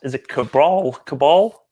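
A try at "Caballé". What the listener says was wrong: It's not going to be Cabral. There's no R in it.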